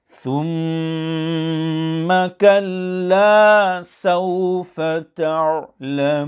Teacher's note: there must be sufficient lengthening of three alifs. This lengthening must also be consistent. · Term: المد العارض